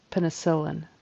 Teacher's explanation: Syllable stress is on the next to the last syllable.